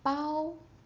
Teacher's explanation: it is high and flat